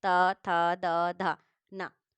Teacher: जब आप ता बोलेंगे ता, तो आपको जो जीभ है ये अंदर बीच में ये जाके टच करेगी दांत में।